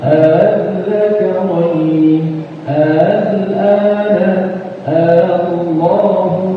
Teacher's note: Kalau dibaca tashil berarti ini dipendekin ya, enggak dibaca panjang.